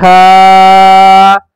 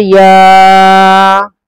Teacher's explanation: حرف مدہ کو اتنا ہی کھینچیں گے جتنا میں نے کھینچا ہے، ایک الف کے برابر